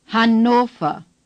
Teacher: The O is clear and long O. The R at the end of a German word is hardly pronounced at all. The V is pronounced like F.